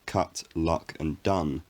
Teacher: in my accent of english as in most the words cut luck and done take the ah vowel the strut vowel